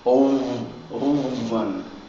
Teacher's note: There's a vowel in front and a vowel behind. That F then gets the V sound.